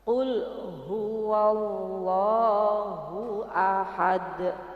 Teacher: Dalnya itu ketika dia waqaf atau berhenti, dia menjadi qalqalah kubra.